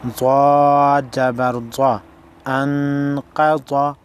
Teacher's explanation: حمزہ نون زبر ان، قاف زبر قا، قاف اور ضاد حروف مستعلیہ میں سے ہے، موٹے پڑھے جائیں گے